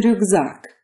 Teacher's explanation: As in rюкзак, the k in the middle turns into a g.